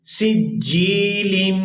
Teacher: یہاں لام پر اخفا کریں گے، آواز ناک کے اندر جائے گی اور اس کو 2 سے 3 سیکنڈ کھینچیں گے۔